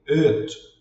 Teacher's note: Nós vamos ver mais à frente, mas nesse caso aqui, geralmente todo mundo vai falar como i. E que na verdade não é um i, é como se fosse um e.